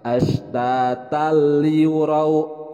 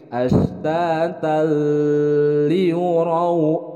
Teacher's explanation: Kalau ashtatal liurau itu adalah idgham bila gunnah. Jadi tidak disertai dengan gunnah. Bacanya langsung.